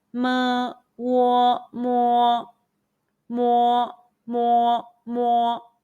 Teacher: Let's combine the initial M, the final Wo, and the high-pitched first tone all together.